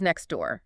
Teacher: Saying the T in next and the D in door requires your tongue to hit the roof of your mouth twice in a row. It takes too long.